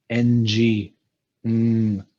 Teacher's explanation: So it's not a hum at the lips. It's a hum which has a more nasal quality. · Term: nasal humming sound